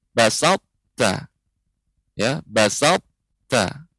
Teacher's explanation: Karena huruf ta sifatnya adalah hamas, ya, ta mengeluarkan aliran udara. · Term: idgham naqis